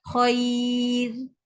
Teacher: Apabila ada huruf ra mati dekat ujung ni, sebelumnya ada huruf ya yang mati dan sebelumnya ada huruf yang berbaris atas, maka automatik ra itu akan menjadi nipis. Dia tak tebal dah.